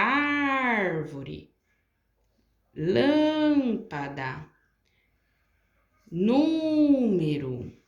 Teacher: nessas palavras aqui eu prolonguei em todas elas A antepenúltima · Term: proparoxítona